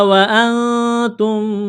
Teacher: نون ساکن کے بعد تا ہے تو یہاں اخفا کریں گے، آواز ناک میں چھپائیں گے · میم ساکن کے بعد دوسری میم مشدد ہے تو میم کا میم میں ادغام کریں گے غنے کے ساتھ